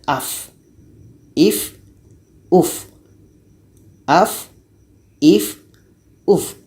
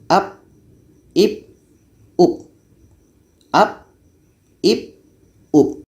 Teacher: Jadi huruf fa ini sifatnya hamas, berangin.